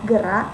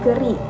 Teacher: kata dasarnya adalah gerak yang diulang menjadi gerik dengan perubahan bunyi pada vokal A menjadi I pada suku kata terakhir